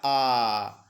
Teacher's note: इस आ की ध्वनि में मुख आपका सबसे बड़ा खुलता है। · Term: विवृत्त स्वर